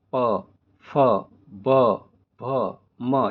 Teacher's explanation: जो वर्ण होठों से बोले जाते हैं उन्हें ओष्ठ्य वर्ण कहते हैं